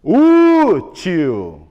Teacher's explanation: 2 sílabas. A penúltima é a mais forte e termina em L.